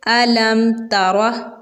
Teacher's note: با اور میم کے علاوہ حرف تا آ رہا ہے تو اب ہم یہاں پر غنہ نہیں کریں گے، اس کو ہم پڑھیں گے علم ترا ایسے۔ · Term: اظہار شفوی